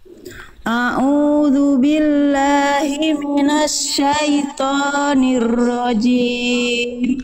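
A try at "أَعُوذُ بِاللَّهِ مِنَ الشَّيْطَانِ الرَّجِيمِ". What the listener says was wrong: Oke, nanti tinggal latih huruf-huruf tebal, angkat pangkal lidahnya Bunda ya, jangan hanya po, angkat pangkal lidahnya. A'udzu billahi minasyaitonir rajim.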